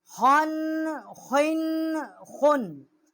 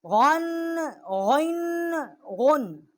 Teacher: خا اور غین جو ہیں ادنائے حلق سے ان کا مخرج ہے، جو منہ کی طرف والا حلق کا حصہ ہے وہاں سے یہ حروف ادا ہوتے ہیں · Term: حروف حلقی